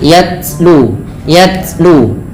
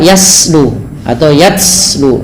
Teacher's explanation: Sifat huruf ta yang paling menonjol dalam ketika dia sukun adalah sifat syiddahnya, yaitu tertahannya suara. Dan langkah kedua yaitu adalah sifat hamasnya, mengalirnya nafas.